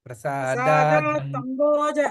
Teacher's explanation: ప్రసాదాత్ అంభోజ అంటే ఆ రెండు కలపాలి. ప్రసాద తర్వాత తకారం కనిపించదు, దా దా అనాలి.